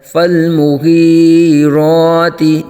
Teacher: را پر کھڑا زبر، را کو پر آ جائے گا۔